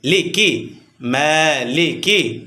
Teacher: খারা জবর আসার কারণে এক আলিফ টান হবে